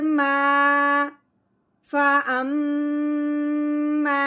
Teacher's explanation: अलिफ से पहले हरफ पे जब भी जबर आ जाए तो वो पहले वाला जो हरफ है वो अलिफ के साथ मिलाते हुए एक अलिफ के बराबर लंबा होगा।